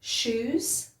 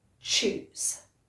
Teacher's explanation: The shoes is much softer. It's almost like you're whispering, sh, sh, shoes. And choose is a harder sound, and you'll feel your tongue move to the top of your mouth.